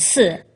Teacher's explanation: an unrounded version of u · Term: unrounded vowels